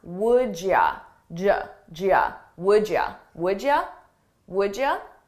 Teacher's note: You becomes ya, and I combine those sounds.